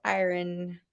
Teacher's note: I would say pronounce the I and the R and then just go straight to the N. Don't think much about the O.